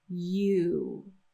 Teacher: When we say the name of the letter U, make sure that you get the glide at the beginning and the glide at the end. So we have the tongue sliding on the roof for the Y sound at the beginning, and then at the end, the lips glide forward to say wa. U.